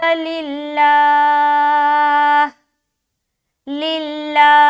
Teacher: लफ्ज़ अल्लाह का लाम से पहले ज़ेर है तो इसको लफ्ज़ अल्लाह का लाम को बारीक रखेंगे